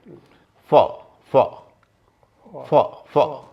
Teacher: ऊपर का दांत और नीचे का होंठ, ये जब मिलते हैं तो अंग्रेजी की फ ध्वनि होती है। फ फ फ फ, बहुत आसान है, फ फ।